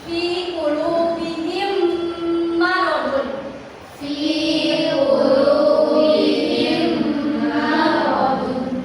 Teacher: pas di bagian bihim itu ada dengungan kan ya? Nah, itu namanya idgham mimi.